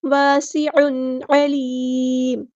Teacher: الف مد آیا تو مد اصلی ہوگی، سین کی سیٹی واضح کریں گے